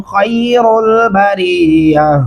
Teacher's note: خا موٹا پڑھیں گے، را کو بھی موٹا پڑھیں گے. بریہ یہاں پہ وقف کرنا ضروری ہے کیونکہ آپ کے پاس سانس نہیں ہے.